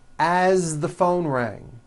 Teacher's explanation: As, you pronounce it with a voiced Z.